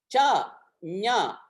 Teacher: ச ஞ நடுவுல தான் தொடும் நாக்கு நடு அன்னத்துல · சா என்று வருகிற பொழுது நடுவுல தொடும், ஞா என்று வருகிற பொழுது நடுவுல தொடும். எனவே இது நடு அன்னம், நடுனா.